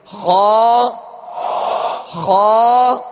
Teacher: حلق کے اوپر والے حصے سے ادا ہوتا ہے · خا کو پر کرتے ہوئے جڑ زبان کو آپ اوپر اٹھائیں گے تو خا ادا ہوگا، یعنی خا پر پڑھا جائے گا. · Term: حروف مستعلیہ